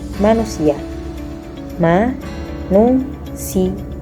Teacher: Kata ia pada manusia mendapat konsonan Y karena I dan A berdampingan